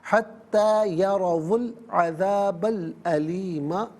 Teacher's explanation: یرو میں را پر زبر ہے، را کو پر کر کے پڑھیں گے، حتی یرو العذاب العلیم، وقف پڑھیں گے تو علیم پڑھیں گے۔